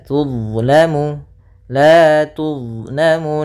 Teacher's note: huruf dha itu termasuk huruf jahar. yang dimana dia tidak boleh mengalir nafasnya